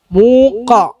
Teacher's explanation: ഖാഫിന് എന്ത് ചെയ്യണം? കനപ്പിക്കണം, തഫ്ഖീം ചെയ്യണം.